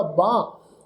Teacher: ਹਾਹੇ ਦੀ ਜਿਹੜੀ ਹਾਹਾ ਅੱਖਰ ਜਿਹੜਾ ਲੱਗਾ ਹੋਇਆ, ਹਾਹਾ ਅੱਖਰ ਕੰਨੇ ਅੱਖਰ ਦੀ ਟੋਨ ਦੇ ਨਾਲ ਹੀ ਮਿਲਵੀ ਟੋਨ ਵਿੱਚ ਉਚਾਰਨ ਹੋਏਗਾ ਬਾਹ। ਹਾਹੇ ਨੂੰ ਸਿਹਾਰੀ ਲਾ ਕੇ ਬਾਹੇ ਨਹੀਂ ਪ੍ਰੋਨਾਊਂਸ ਕਰਾਂਗੇ, ਬਾਹ ਸ਼ਬਦ ਉਚਾਰਨ ਕਰਾਂਗੇ।